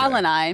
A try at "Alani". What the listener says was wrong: He literally pronounces Alani Alanai.